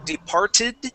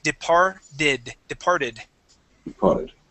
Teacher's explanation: when it ends with a T that t then turns into a D sound so uh instead of saying departed we would say departed departed